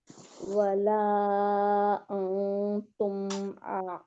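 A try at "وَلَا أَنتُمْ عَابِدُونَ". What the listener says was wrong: इसको मोटा इख्फा ना करें, तुम नहीं करें, तुम, क्योंकि ये बारीक हर्फ है ना नून।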